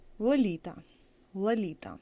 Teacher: in this case first L is hard and the second one is soft the soft one of course doesn't have this feature of having